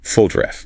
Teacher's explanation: That second O reduces to a schwa